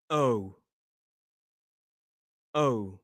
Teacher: So your tongue stays neutral at the start and then lifts at the end. Oh, oh. So the sound kind of moves with your mouth.